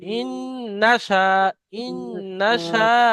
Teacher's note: গুণনা হবে অবশ্যই নুনের উপর তাসদিদ থাকার কারণে · ইন নাশা, শাটা টান দিতে হবে